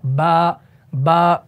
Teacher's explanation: आपका होता है वेट यानी आपका तर वाला हिस्सा होता है जब ये तर वाला हिस्सा आप आपस में मिलाएंगे नीचे वाले होठ का तर हिस्सा और ऊपर वाले होठ का तो आपका हर्फ बा अदा होगा